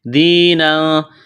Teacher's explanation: یا ساکن سے پہلے زیر ہے، یا مدہ ہے، ایک الف کے برابر کھینچنا ہے